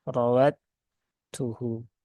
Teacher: langsung raduhu yau dan rnya ini berbaris fathah atau berharakat fathah maka rnya dibaca dengan cara tafkhim ya ya ditebalkan rnya dengan cara menaikkan ya menaikkan pangkal pangkal lidah